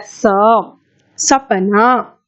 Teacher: दंत। देखो, दांत को जीभ से लगाकर इसे बोला जाता है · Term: दंत्य सकार